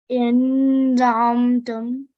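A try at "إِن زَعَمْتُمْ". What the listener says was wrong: Okay, don't say the noon fully. We are doing ikhfa, concealing the sound of noon. In za'amtum.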